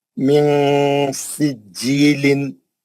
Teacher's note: नून जबान की नोक नून के मखरज को लगने नहीं देना उसको पकड़ के नीचे रखना आवाज को नाक में लेके जाना अच्छा गुना करना नून की आवाज को छुपा के गुना करना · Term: नून साकिन का इफा, इफा